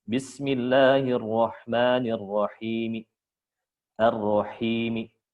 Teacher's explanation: ar-raum itu dibaca lebih pendek durasinya dan lebih pelan volumenya, itu aja.